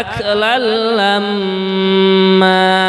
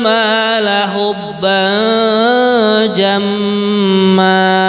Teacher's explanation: Adapun mimnya berharokat tasydid namanya adalah gunnah, dibaca dengan mendengung ya.